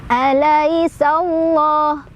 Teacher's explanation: Alaisallahu keluar angin halus ya, hamas.